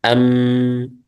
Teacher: untuk mim yaitu ada tambahan yaitu ghunah